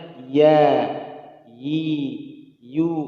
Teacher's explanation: Dia huruf tipis karena tidak isti'la, ya. Jadi pengucapannya ya, yi, yu.